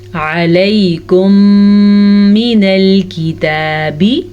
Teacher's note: میم ساکن کے بعد میم متحرک آنے کی وجہ سے دونوں میموں کو ہم آپس میں ملا دیں گے اور غنّے کے ساتھ ملائیں گے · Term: ادغام شفی